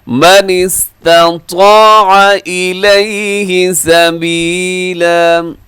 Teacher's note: اکٹھے آگے ہیں تو تا باریک، طا موٹا، اسے من استطاع نہیں پڑھنا آپ نے۔